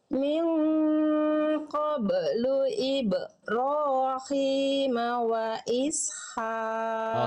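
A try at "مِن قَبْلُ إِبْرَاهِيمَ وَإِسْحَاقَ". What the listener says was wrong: Oke, pantulannya sudah tipis, tapi ba sukunnya masih ada yang harus kita maksimalkan. Apa kira-kira di halaman 112 dalam buku saya, ba sukun yang Bunda lafalkan, poin 2 kesalahannya. Sudah dipantulkan, namun pantulan pelafalan ujung pantulannya itu tertahan. Yang Bunda baca tadi begini.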